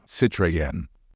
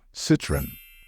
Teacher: in English, the stress falls on the first syllable